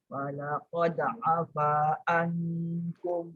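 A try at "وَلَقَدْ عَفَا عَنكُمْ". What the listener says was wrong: Ain masuk sikit lagi.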